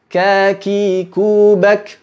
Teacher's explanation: Jadi mesti dibedakan mana qalqalah, mana hams. Adapun ketika berharokat, huruf kaf tetap mesti ada udaranya, namun tidak berlebihan. Contoh, kaki kubak, bukan kaki kubak.